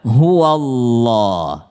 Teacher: Nah, ada yang sangat penting ketika fathah bertemu dengan Allah, huwallah, ya. Ini huwa huruf fathah bertemu dengan Allah, maka dia tafkhim, maka dia tebal.